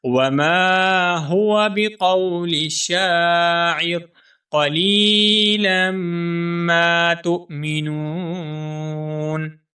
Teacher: وما ہوا میں جو ہا ہے، اس ہا کو ہم موٹا کر کے پڑھیں گے · شاعر یہاں پر جو شین ہے، اس شین کو ہم ایک الف کے برابر کھینچ کر پڑھیں گے کیونکہ یہاں پر الف مدہ ہے۔